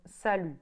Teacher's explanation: It spells S-A-L-U-T, but the T does not get pronounced. And that's mostly the case when a word ends with a vowel and a consonant.